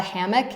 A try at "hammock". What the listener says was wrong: It's an O, not an I.